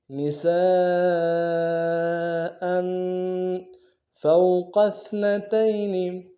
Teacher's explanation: قوف کو موٹا ادا کریں گے، سا کو باریک ادا کریں گے